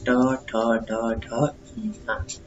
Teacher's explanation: जो ट होता है, ट, ठ, ड, ढ, न, ये आपके मूर्धन्य होते हैं